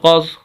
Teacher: دونوں لفظ موٹے ہیں، قاف کو ضاد کے ساتھ ملائیں گے